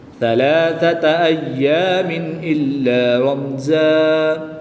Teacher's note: دو زبر کی تنوین کو وقف میں الف مدہ سے تبدیل کر دیں گے